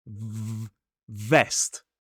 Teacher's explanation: the VV sound like invest needs to touch the top teeth on that bottom lip. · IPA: /vest/